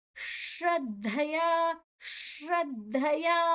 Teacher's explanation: ಶ್ರದ್ಧಯ ಅಲ್ಲಿ ದ ಅಲ್ಪ ಪ್ರಾಣ, ಅಡಿ ಒತ್ತು ಧ ಮಹಾಪ್ರಾಣ. ಓಕೆ, ಅದನ್ನ ಶ್ರದ್ಧಯ ದ ಅನ್ನ ಅಲ್ಪ ಪ್ರಾಣವಾಗಿ ತಗೊಳ್ಬೇಕು, ಮಹಾಪ್ರಾಣವಾಗಿ ತಗೊಳ್ಲಿಕ್ಕಿಲ್ಲ.